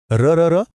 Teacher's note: र जाणवतय जीभ कंप पावते हो ना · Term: कंपित वर्ण